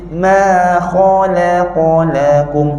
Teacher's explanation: mim nipis Kha tebal lam nipis ka tebal balik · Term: nipis tebal